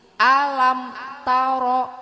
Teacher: Mim mati, alam, mim mati. Ibu mingkemnya enggak boleh lama-lama ya Bu ya, karena bacaan idhar safawi.